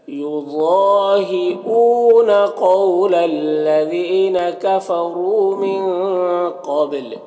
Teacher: واو مدہ ہے، ایک الف کے برابر کھینچیں گے، نون میں اخفا ہوگا. قاف کو پر پڑھیں گے، با میں قلقلہ کریں گے